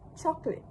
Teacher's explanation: the standard pronunciation drops the middle vowel sound the schwa resulting in just two syllable word which is chocolate.